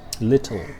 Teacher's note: And this symbol shows that the consonant L is pronounced as a separate syllable. Example, in the word little, the L sound is in fact a new syllable